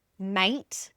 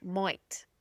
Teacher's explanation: that diphthong A, which is quite pronounced for us as well, tends to sound like oi. So mate can sound like moit.